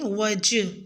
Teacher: وجہی ہی کے جیم ساکن پہ قلقلہ کریں